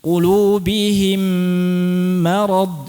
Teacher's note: gunnah kan dipanjangkan sama seperti pada umumnya, tapi gunnahnya murni melalui hidung